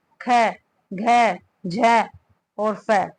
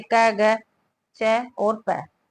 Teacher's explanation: महाप्राण व्यंजन वह व्यंजन होते हैं जिन्हें मुख से वायु प्रवाह के साथ बोला जाता है